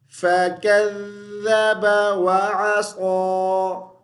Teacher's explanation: ذال کو پڑھتے ہوئے زبان کی نوک دونوں دانتوں کے درمیان میں رکھیں گے۔